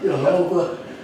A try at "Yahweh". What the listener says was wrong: No, Jehovah. There's no J in the Hebrew language. So it's Jehovah, Yahweh, the only living and true God. So remember this, guys, when you're reading Old Testament, remember there's no J in there vocabulary, or in their alphabet. There's no J.